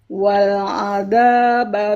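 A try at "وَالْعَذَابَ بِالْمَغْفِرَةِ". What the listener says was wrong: wal adza harus rokhawah, harus ngalir.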